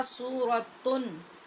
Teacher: اسے اپنے مخرج سے حرف کو یعنی نون ساکن نون تنوین کو ظاہر کر کے پڑھا جائے اور غنہ نہ کیا جائے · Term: اظہار